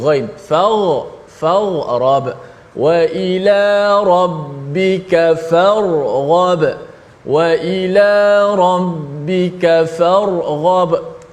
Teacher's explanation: makhraj ra hujung lidah, ghain berada di hujung halkum. Jauh beza makhraj.